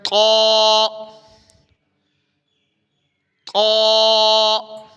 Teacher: حروف مستعلیہ طا، اس کے اوپر مد نہیں ہے تو اس کو ہم نے لمبا نہیں کرنا، موٹا پڑھنا ہے۔ تا اور طا میں فرق ہے، تو یہ ہے طا طا۔